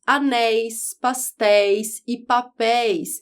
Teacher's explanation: o ditongo aberto Ei nas palavras Anéis pastéis e papéis